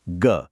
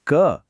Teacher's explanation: घोष मतलब गूंज वाइब्रेशन। यह सॉफ्ट आवाजें हैं। जैसे ग और अघोष मतलब बिना गूंज के सिर्फ हवा। यह हार्ड आवाजें हैं। जैसे क बस इतना ही है।